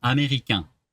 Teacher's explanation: you don't actually need the N at the end because it's part of that nasal sound